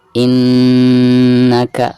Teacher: ada Nun yang bertasydid ya yaitu merupakan salah satu daripada huruf ghunnah maka ketika membacanya itu harus ada guna Ya baik 2/3 harokatnya ditahan dulu ya in naga seperti itu · Maka ketika membacanya itu harus ada gunnah ya, baik 2 atau 3 harokat. Jadi ditahan dulu ya.